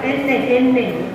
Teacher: Atrás de los dientes, con la punta de la lengua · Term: la N